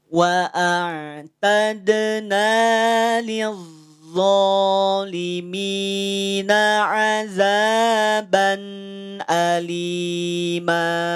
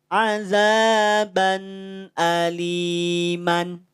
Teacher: tanwin fathah, setelahnya ada mad yaitu alif, maka mimnya panjangkan 2 harokat mad iwad.